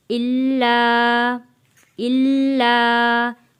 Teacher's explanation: لام کے اوپر تشدید ہے، تھوڑا سختی کے ساتھ رک کر ہم ادا کریں گے